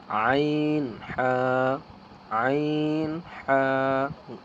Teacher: গলা চিপে অর্থাৎ গলাকে একটু ভালোভাবে চিপে